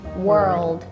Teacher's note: World sounds to me a bit more rounded